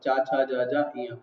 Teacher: किसी भी अक्षर को बोल देखो, है ना, बोलते हुए जीवा हमारे मुंह के भीतर की छत के पिछले हिस्से को टच करती है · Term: तालव्य